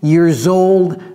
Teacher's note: Et vous voyez la liaison également ici, years old. Donc ça devient comme si c'était un Z